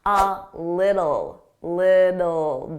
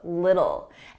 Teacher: Notice I didn't pronounce those T's. I pronounce them as soft D's.